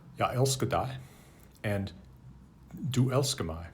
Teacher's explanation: note that the second syllable in the word elsker love has become a schwa, or the vowel has become schwa rather than a.